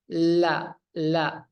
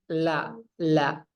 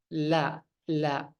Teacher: Dia itu aliran napasnya itu menyimpang, itu tidak seperti huruf lainnya. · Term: inhiraf